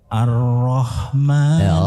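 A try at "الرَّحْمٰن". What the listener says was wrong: Ra-nya lebih ditebalkan sedikit. Ar-ra. Jadi tebalnya ra, Bapak Ibu sekalian, itu tidak hanya di bibir. Ar-ra. Itu kan masih di luar. Ar-ra. Kalau di dalam ar-ra, itu sudah melibatkan pangkal lidah yang diangkat. Ar-ra. Kita bedakan sedikit. Ar-ra dan ar-ra.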